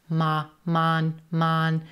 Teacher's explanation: Now notice that first syllable is not reduced. It's not a schwa. It's a ma, mon, mon, but it's not stressed.